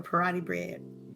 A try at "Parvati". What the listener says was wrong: Parati Bread from Outer Worlds. You gotta say this actual name because you throw me off with the bread part. Parvati.